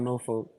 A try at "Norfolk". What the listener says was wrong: and it's Norfolk. You gotta cuss. You gotta cuss. Norfolk. That's how you say it. Norfolk. don't pronounce the L. NAWFUK. Norfolk. That's how you pronounce it. Norfolk. You gotta cuss. Norfolk.